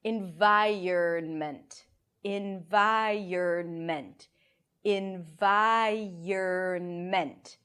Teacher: I like to imagine as if there is a y sound that connects the vi and the ern.